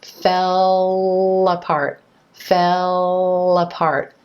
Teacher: the back of the tongue is coming down and back for the dark L fell and then the tip of the tongue is coming up